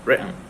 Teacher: just make a little pause before pronouncing the consonant N